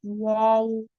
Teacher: दोनों होठों को कुछ गोल करने से ये हर्फ अदा होता है, और वो है वाव, यानी कि इस तरह से वाव।